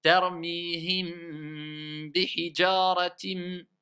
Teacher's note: À chaque fois qu'il y a le mim avant le ba, eh bien, on va rester sur le mim en le prononçant clairement. Donc, clairement, il n'y a pas d'irfa.